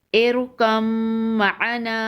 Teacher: حمزہ را زیر ار، کاف میم زبر کم، ارکم، میم زبر ما، ارکم ما، عین زبر ع، ارکم مع، نون الف زبر نا، ارکم معنا، وقف، ارکم معنا۔ میم مشدد ہے تو یہاں پر غنہ ہوگا۔